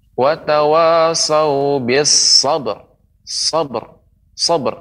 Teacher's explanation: ba ini huruf qalqalah, maka tinggal dipantulkan